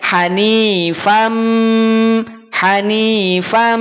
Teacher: dengan huruf mim maka yang semula an dia berubah menjadi am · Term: Idgham